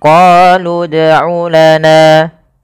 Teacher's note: Maka apabila kita mendapati sukun dan sukun huruf itu ada sukun, waw sukun ini sampai sukun, maka yang kita anggap adalah sukun akhirnya saja. Awalnya misalkan qalu itu panjang, tapi karena bertemu dengan huruf sukun, maka huruf yang panjang tadi menjadi pendek dan kita matikan langsung kepada huruf yang dia berharokat sukun.